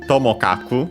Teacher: there's also another version, Tomokaku, also accented luckily on the first syllable